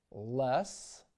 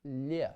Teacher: To form the soft L. The tongue flattens and its sides go up towards the hard pallet. The tip of the tongue can rest against the center of the front teeth, but it can just as easily remain touching the lower front teeth. · The English L of course is hard. The Russian L is soft. Lube in English versus llu in Russian or log versus leak in English versus leak.